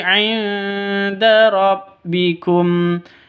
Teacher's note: 'Inda, non mati bertemu dengan dal. Cara bacanya samar didengungkan, siap-siap ke huruf dalnya. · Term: ikhfa hakiki